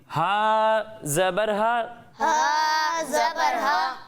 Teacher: ہا کی ادائیگی کریں گے تو اسے حلق کے درمیانے حصے سے پڑھیں گے